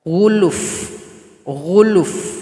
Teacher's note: cara berhenti pada huruf Fa yang didahului oleh huruf sukun berikan bunyi angin atau bunyi vokalnya